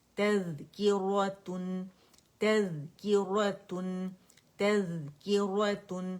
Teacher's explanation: Buzzing sound اس میں نہیں ہوگی، زال ہے باریک ہے ٹھیک ہے، اور اس کو تذ کر کے نہیں پڑھیں گے، تا بھی باریک ہے زال بھی باریک ہے ٹھیک ہے.